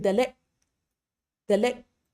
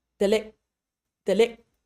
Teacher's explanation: So a g sound at the end, like in delek, delek, what happens is my tongue, the back of my tongue is touching the roof of my mouth like I would for a g or k sound, but then it's just stopping. No further air is going through. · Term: glottal stop